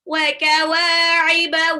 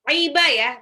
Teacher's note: wawunya mad tabi'i 2 harokat. Iba ya, bukan kiba.